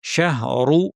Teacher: শাহরু ভারী, রু এর সাথে কোনো টান নাই।